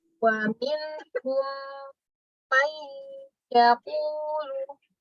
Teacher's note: Kalau dia mim sukunnya itu bertemu huruf mim. Caranya dimasukkan ke dalam huruf berikutnya dan baca dengung. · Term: idgham mimi